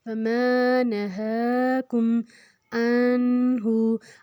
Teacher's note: نون میں ناک میں نہیں لے کے جائیں گے